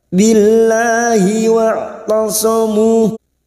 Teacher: Billahi lam jalalah yang sebelumnya kasroh kita baca tarkik tipis. Billahi lahnya kita panjangkan 2 harokat.